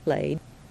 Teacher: ED sounds like just the D. It drops E when the sound before it is voiced, because D is voiced, D, right?